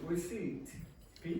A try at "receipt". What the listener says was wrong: Receipt. Yeah, the P is not pronounced. Okay, receipt.